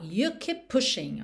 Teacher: Keep termina em P, pushing começa em P, você junta num P só.